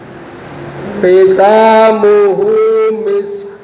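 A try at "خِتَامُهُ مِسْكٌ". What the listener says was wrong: Sekali lagi koknya kurang getar. Itu kha itu khitamuhu misk ya.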